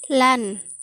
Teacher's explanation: vokal yang timbul karena lidah bagian tengah digunakan. Letaknya di tengah, mulut tidak bundar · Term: Fathah pendek